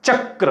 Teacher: चक्र म्हणजे चमध्ये य मिसळले म्हणजे याचं उगमस्थान काय होईल तालव्य